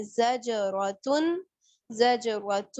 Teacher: تو جیم جب حروف قلقلہ پہ ساکن آ جاتا ہے تو ہم اس کو ہلا کے پڑھتے ہیں · ادغام کس چیز کا ہو رہا ہے؟ دو ضمہ کا واو میں ہو رہا ہے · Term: ادغام مع الغنہ